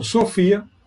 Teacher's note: Sofia é uma palavra grave, 3 sílabas, penúltima sílaba.